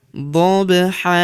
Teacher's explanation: tanwin an hilang berubah menjadi fathah dan kita panjangkan dua harakat ya karena kita hentikan bacaan kita di sini ya. · Wal adiyati dhab, huruf ba berharokat sukun kita pantulkan atau kita qalqalahkan. Dhabha.